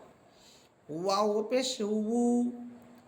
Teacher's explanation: ওয়াও হরফ দুই ঠোঁট গোল করার পর দুই ঠোঁটের মাঝে যে শূন্য জায়গা থাকবে সেখান থেকে যে আওয়াজটা বের হবে সেটি হচ্ছে ওয়াও।